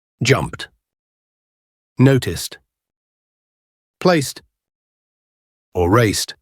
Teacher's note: If the infinitive ends in a C, K, P, X, CH, GH, SH, SS, or TH sound, say the verb in full and add a voiceless T at the end as pronounced in talk, time, or tea